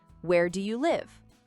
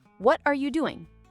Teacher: your voice usually goes down at the end